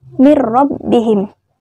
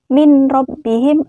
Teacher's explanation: memasukkan huruf pertama ke dalam huruf kedua dengan tidak berdengung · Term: idgham bilaghunnah